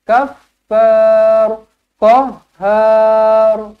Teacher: Tebalkan ra kerana huruf sebelumnya berbaris atas